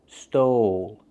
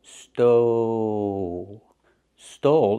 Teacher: We use the long O like know and go, but we have the dark L at the end. Stole. It starts here and moves forward.